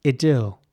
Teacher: in British English, this would be pronounced idyll with an E sound